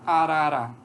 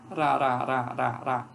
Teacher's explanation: É bem fácil perceber isso na palavra arara. A gente percebe que é um toque da lâmina da língua nos alvéolos.